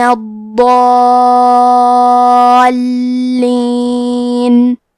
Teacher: کلمت الضالین میں حرف الضاد ہے. ضاد کو ہم زبان کے کروٹ اور اوپر کے داڑھوں کے جڑ سے پڑھیں گے. ضاد حروف تفخیم میں سے ہے، تو ہم یہ حرف کو موٹی آواز میں پڑھیں گے. · کیونکہ اس کے بعد مد الف ہے تو مد الف کو بھی تفخیم سے ادا کرنا ہے. یہ مد لازم کلمہ مثقل ہے. اس مد میں ہم اپنی آواز 6 مد کے برابر لمبی کریں گے. پھر حرف اللام کو 2 حرف کے برابر پڑھیں گے کیونکہ لام پہ تشدید ہے.